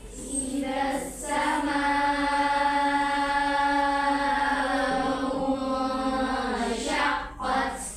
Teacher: U-nya kan kalian memonyongkan bibir karena kan hamzah yang berharokat juma. Tapi itu kan bertemu dengan nun sukun kemudian huruf shin.